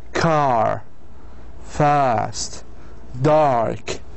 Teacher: the center of the tongue is actually raised to the roof of the mouth to the soft pallet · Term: long sound